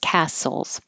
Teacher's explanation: there's no t just castles